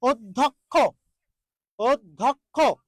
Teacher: যে জ ফলা আছে দেখুন এই যে জ ফলা বলা হয়েছে জ ফলার আগে একটা অ আছে তাহলে এই অ এর উচ্চারণটা কি হবে ও হবে